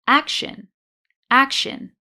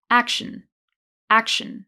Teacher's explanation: in one version, I'm just saying the I sound a little more prominently, and in the other, I'm just reducing it